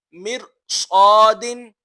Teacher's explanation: ایک ہی کلمے میں را ساکن سے پہلے زیر اصلی ہو اور اس کے بعد حروف مستعلیہ ہو تو را ساکن کو پر پڑھیں گے